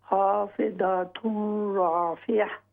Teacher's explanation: یہ جو لفظ ہوگا نا تن را، تن کی بجائے یہ ہوگا ترا